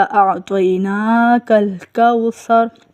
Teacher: اِنَّا اعطیناکل کوثر، اس میں صرف آپ نے نون کو لمبا کرنا ہے، اعطینا میں نون کو لمبا کیا جائے گا